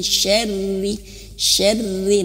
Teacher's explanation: huruf ro ini harus tipis ya karena dia berharakat kasrah jangan sampai Huruf rnya tebal miny Syar jangan tapi Syar tipis